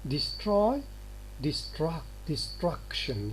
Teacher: It's no longer oi after it becomes ah.